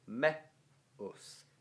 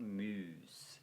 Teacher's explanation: The E is short because it's followed by a U, but that's not a diphthong. It's not muse, it's meus.